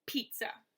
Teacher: the first syllable is stressed the second is unstressed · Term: trochee